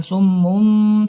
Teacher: Iklab, ya, iklab. Nah, mengganti bunyi nun menjadi bunyi mim.